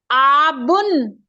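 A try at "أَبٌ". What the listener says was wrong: अबुन, अबुन, आबुन नहीं है, अपने आप को तकलीफ ना दे, अबुन, अबुन। हर जगह तिल का नहीं लगाना मेरी बहन, इसको देख के लगाना है।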